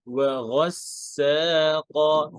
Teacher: ওয়াও পাতলা, و গয়েন heavy, গয়েন মোটা, আবার সিন পাতলা। এরপর আবার কফ মোটা।